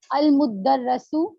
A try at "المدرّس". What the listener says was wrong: دیکھیں مدرہ نہیں ہے، یہ تشدید کے نیچے جب ہوگا تو زیر پڑی جائے گی.